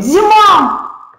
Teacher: Слышим, что «а» – это тот звук, который долго тянется, динамичней идет его звучание, чем у безударного, он более длительный. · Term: ударный